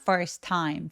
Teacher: t와의 t가 만나서 또 한 번만 발음하니까